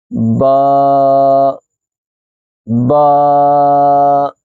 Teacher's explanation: با کو ادا کرتے وقت یاد رکھیں دونوں ہونٹوں کے تر حصے کو آپس میں جب ملایا جائے گا تو با ادا ہوگا۔ با دونوں ہونٹوں کے تر حصے کو آپس میں ملائیں گے تو با ادا ہوگا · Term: حروف شفوی